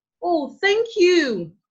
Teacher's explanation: someone that says thank you in a high to low tone would actually mean real gratitude